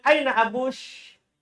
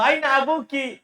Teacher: Kaskasahnya orang Tamim, mereka menggunakan shin untuk perempuan. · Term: kaskasah tamim